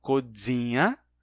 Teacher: esse N entre vogais de codzina se relaxa, deixando uma nasalidade sobre a vogal precedente. Codzina se torna codzinha, e a partir de codzinha, duas coisas acontecem.